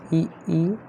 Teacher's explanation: यानी जब इनका उच्चारण होता है जीभ का अगला भाग ऊपर उठता है। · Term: अग्र स्वर